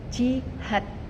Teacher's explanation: pada kata ini had bukan diakhiri dengan fonem D, tetapi diakhiri dengan fonem T